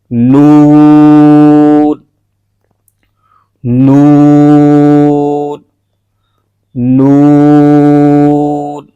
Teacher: अनिया से सनाया तक के दांतों की जो जड़ है उसको जबान का किनारा लगेगा और वहां से हरफ अदा होगा · زبان کا کنارہ اور انیاب سے، زبان کا کنارہ اور انیاب سے ثنایا، ثنایا یہ سامنے کے جو 2 دانت ہیں ان کو ثنایا کہتے ہیں، تو ان سے تھوڑا سا پیچھے یہاں پر انیاب ہے، انیاب سے ثنایا تک کے، اور اسی طرح اس طرح بھی انیاب سے ثنایا تک کے دانتوں کی جو جڑ ہے اس کو زبان کا کنارہ لگے گا، اور وہاں سے حرف ادا ہوگا نون، نون، نون۔